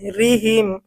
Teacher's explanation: এখানে আমরা রয়ের উচ্চারণটা চিকন করব, পাতলা করব।